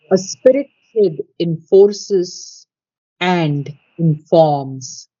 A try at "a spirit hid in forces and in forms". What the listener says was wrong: don't want to accent the word and. We don't want to accent that word. just want to have D on the end of it.